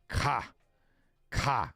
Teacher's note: K is a glottalized consonant similar to the English K sound, but has a stronger emphasis at the back of the throat.